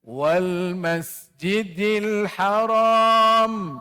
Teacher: huruf lam sifat dia tawasut pertengahan